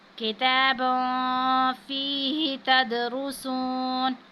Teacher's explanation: دال ساکن ہے، حروف قلقلہ میں سے ہے، تو یہاں پہ ہم نے قلقلہ کرنا ہے